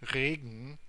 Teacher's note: the n in the consonant cluster gn is spoken at the front of your mouth, and that's the same place we're going to say the t.